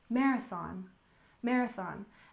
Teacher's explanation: we have marathon with stress on the first syllable